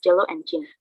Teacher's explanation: Starts out as a stop but ends up as a fricative. The sound is phonetically represented as C, sigma. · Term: affricate